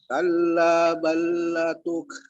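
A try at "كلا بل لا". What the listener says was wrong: La-nya panjang.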